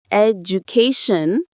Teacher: Now we apply the stress pattern. When you say it, education, the stress lands loud and clear on that third syllable.